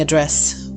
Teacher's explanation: The noun form address, pronounced with the stress on the first syllable